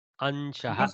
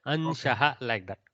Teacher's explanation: Okay. It should be like more nasal. The original Anuswara sound.